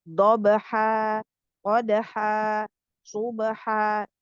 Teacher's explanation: disebabkan kita ingin wakaf berhenti maka tanwinnya berubah menjadi ee Mad yang panjangnya dua harakat